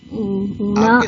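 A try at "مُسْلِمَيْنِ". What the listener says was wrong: آپ کے سامنے جو لکھا ہوا ہے اس میں بھی ڈیش کے نیچے زیر لگا ہوا ہے، تو زیر کیسے پڑھتے ہیں آپ؟ اینا ہوگا نا پھر وہ اونا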